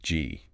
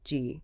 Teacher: The back of your tongue is pressing up against the soft part of the roof of your mouth. The vellum. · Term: hard G sound